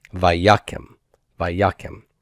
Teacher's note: It would have been vayakem with a serre, but my stress retracted. It went to the prefix consonant, just as we saw a little earlier in the cal imperfect of hollow verbs.